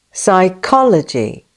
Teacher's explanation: This word has a silent P at the beginning and has four syllables with the main stress on the second syllable. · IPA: /saɪˈkɒl.ə.dʒi/